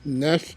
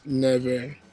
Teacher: the f in nef is going to change to a v. So, nef becomes never.